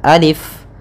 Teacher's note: ketika kita membacanya untuk Alif ini la yumaddu tidak dimadkan Tidak dipanjangkan